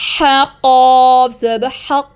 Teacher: ہا گلے کے درمیان سے ہے، مڈل تھروٹ سے ہے، قاف ٹنگ کے روٹ سے ہیں، اس کو ہیوی پڑھنا ہے